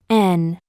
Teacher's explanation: Para ejecutar este sonido, separaremos ligeramente los labios, y colocando la punta de la lengua entre la parte trasera de los dientes superiores y el paladar, bloquearemos la salida de aire por la boca, con lo cual, el aire sería expulsado por la nariz al momento de producir el sonido. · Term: sonido nasal